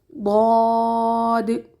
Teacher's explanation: ہونٹوں کو گول کر کے پر حروف کو ادا مت کریں۔ ضاد، ضاد نرم حرف ہے، پر ہے، لیکن اس میں سانس جاری نہیں رہے گی۔ زبان کی موٹی سائڈیں جنہیں حافہ لسان کہا جاتا ہے، ان کے مقابل اوپر کی داڑھوں کی اندرونی سطح سے لگنے پر ادا ہوتا ہے۔